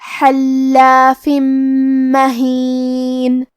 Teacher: جیسا کہ یہاں حرف اللام ہے تو یہ 2 لام ہیں، لام ساکن اور لام متحرک. کلمت حلاف میں حرف الحا کو ہم حلق کے درمیان والے حصے سے پڑھیں گے، لام کے تشدید کو ظاہر کریں گے، اور فا کے نیچے تنوین زیر ہے، اور اس کے بعد میم آتا ہے. · میم حروف الادغام بغنہ میں سے ہے، اور ادغام کا معنی ہے حرف کو حرف میں داخل کرنا، تو ہم یہ تنوین کو میم میں ملا کے غنہ اور تشدید کے ساتھ یہ حکم کو ادا کریں گے · کلمت مہین کے آخری میں نون پہ رکیں گے تو اس پہ جزم سے رکیں گے، لہذا ہمیں نون کو ظاہر کرنا ہے